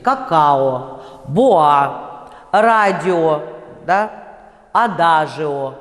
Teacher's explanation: «Какао», «боа», «радио», да, «адажио», вы видите, в сочетаниях гласных. С гласным мне приходится произносить безударный «о».